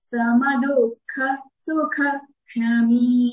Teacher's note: కాబట్టి ఎలా పలకాలంటే సమ దుఃఖ సుఖ క్షమీ. క్షమీ మీ దీర్ఘంగా పలకాలండి, దీర్ఘాక్షరంతో ఎండ్ అవుతోంది ఈ చరణం.